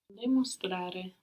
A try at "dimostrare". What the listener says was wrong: Good, but not de, but dimostrare.